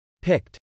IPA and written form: pˈɪkt (picked)